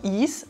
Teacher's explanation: das Verb sein in der dritten Person Singular reduzieren wir immer von ist auf ein is